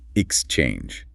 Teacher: For this word, the stress lands heavily on the second syllable.